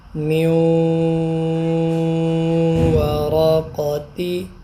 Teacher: اب یہ نون کے بعد واو آ رہا ہے تو نون کا ادغام ہو رہا ہے واو میں